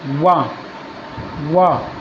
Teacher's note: वाह जो है दांतों से और ओठों से दोनों से बोला जाता है, चाहे बोल कर देख लो भाई।